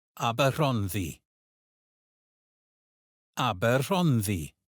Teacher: Notice how the double D sounds like the th in this, and how the stress falls on hon. Try it again.